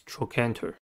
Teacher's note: Trochanter has three syllables and the stress is at the second one.